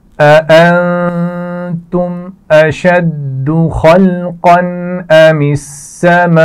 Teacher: ام السماء یہاں پر بڑی مد ہے تو بڑی مد کو خوب کھینچ کر پڑھیں گے اور آخر میں حمزہ پر پیش ہے تو اس کو ساکن کر دیا جائے گا جس کی وجہ سے ہلکا سا جھٹکا آخر میں آئے گا. بہت زیادہ زور سے نہیں دینا.